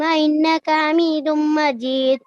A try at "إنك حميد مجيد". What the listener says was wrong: اچھا، جو قلقلے تھے نا دال کے وہ تھوڑے واضح نہیں تھے، ٹھیک ہے، ان کو واضح کریں. جیسے محمد پہ روکیں تو محمد، محمد، ٹھیک ہے، اور اینڈ پہ انک حمید مجید.